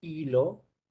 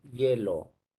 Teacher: En el primer caso, la I efectivamente suena como I, pero en el segundo caso suena como Y, como Y. O sea que si transcribimos fonológicamente, el primero sería pues hilo.